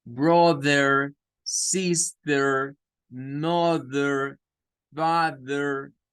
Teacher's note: allí el TH es vibrante y suena más como una D